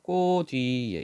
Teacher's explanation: 모음으로 시작했지만 뜻을 가지고 있으니까 이때 치을 디귿으로 바뀌고 뒤로 넘겨야 되죠